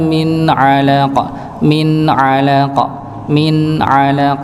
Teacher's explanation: nun sukun bertemu dengan huruf ain. Ya, huruf ain, maka dia dibaca jelas. Ya, sejelas-jelasnya idhar tetap ada sedikit dengungnya.